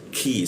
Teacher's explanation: Mulki masuk ke ki di sikut tengonggorokan ya. Ki lidahnya diturunkan sehingga rongga udara terbuka dan ada hembusan udara ketika dibacanya